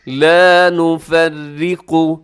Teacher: آگے لا نفرق، یہاں را باریک ہے لیکن آگے قاف موٹا پڑا جائے گا